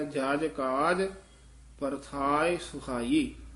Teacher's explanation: ਜਜ ਕਸ ਕੇ ਨਹੀਂ ਬੋਲਣਾ ਜਜ ਜਜਣਾ ਯਾਨੀ ਪੂਜਾ ਕਰਨੀ ਜਜ ਪੋਲਾ ਉਚਾਰਨ ਕਰਨਾ